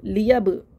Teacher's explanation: बा साकिन पे कलकला हो रहा है